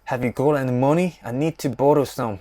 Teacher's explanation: Scottish people speak in English with a tap R sound or a short R sound.